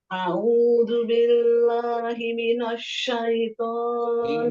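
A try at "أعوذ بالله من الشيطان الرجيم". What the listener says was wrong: Minasya. Tipiskan naknya.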